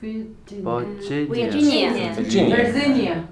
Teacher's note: the second syllable is the strong one